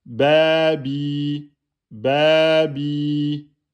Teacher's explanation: Le ya, il ne porte pas de voyelle. C'est donc la prolongation de la kasra en deux temps.